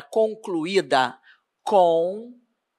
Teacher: ela é uma paroxítona porque a penúltima sílaba dela é a tônica